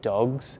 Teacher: You need to vibrate and use your vocal cords to say a G, and that's why we add a Z sound, because it's a lot easier to pronounce